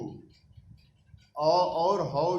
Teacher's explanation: इनका उच्चारण स्थान कंठ है, ये कंठ से बोले जाते हैं। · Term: कंठ स्थानिक